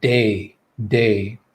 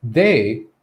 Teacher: we say day day all right now the second word they the only difference is that first consonant sound instead of a d we have that voiced th